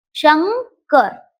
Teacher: मुळात न उच्चार नाही आपण करतो पण तो असा ग युक्त उच्चार आहे